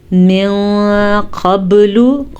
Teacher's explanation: क़ाफ मोटा है, बा पे कलकला हो रहा है